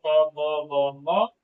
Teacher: दोनों होंठ आपस में स्पर्श करते हैं, तो उसे हम लोग ओष्ठ कहेंगे।